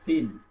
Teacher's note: এই সিনটা আমরা সাধারণ দন্তের স দিয়ে আমরা সিন উচ্চারণ করবো